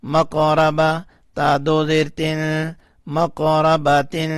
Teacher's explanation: میم قاف زبر ماقو، را زبر مقورا، با زبر با، مقوربا، تا دو زیر تین، مقورباتن، تا کے نیچے جو دو زیریں ہیں اس میں جو نون کی آواز آ رہی ہے اس کو ہم نے تھوڑا سا چھپا لیا، یعنی اخفا کیا